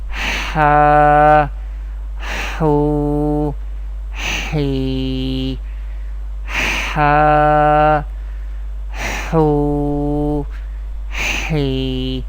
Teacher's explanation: We pronounce the letters of Madda in an Arabic accent by stretching them up to 1 alif, that is up to 2 harakat.